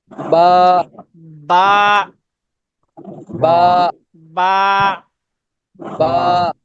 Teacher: দুই ঠোঁটের ভিজা জায়গা, ওটা ওই জায়গা থেকে উচ্চারণ হবে